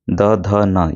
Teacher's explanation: द, ध, न ये दाँत की सहायता से बोले जाते हैं, इनको दंतय हम कहते हैं।